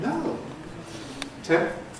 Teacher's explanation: For the M and the P together, there's only one single movement of the lips